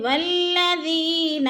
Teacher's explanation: یا مدہ کو ایک الف 2 حرکات کے برابر ہم نے لمبا کر کے پڑھنا ہے